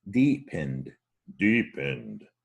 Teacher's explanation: that ed, you don't pronounce the e, so you don't say ed.